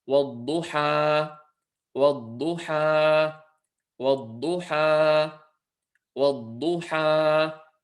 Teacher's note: It's an example of mad al-tabi'i, and we say wad-duha, wad-duha, wad-duha, wad-duha. So again, the ha at the end with the fatha and the alif staying as two lengths long